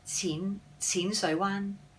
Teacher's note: Both mid-risings for the Qin Sui Wan, and the Wan is a high tone meaning bay.